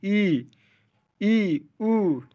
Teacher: संवृत close, जिन स्वरों के उच्चारण में मुख्य द्वार लगभग बंद रहता है, ई उ। देखिए जब आप ई बोलेंगे तो एकदम मुंह बंद रहेगा आपका।